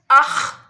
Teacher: खा को हलक के ऊपर वाले हिस्से से अदा करना है।